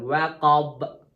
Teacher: Və min şərri qasiqin İzə zəl tərtək İzə vəqab dodaqlar bir-birlərinə dəyir. Bənin qəlqələsində dodaqlar bir-birinə dəyir.